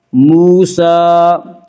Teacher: واو مدہ کو ایک الف کے برابر کھینچ کر پڑھیں گے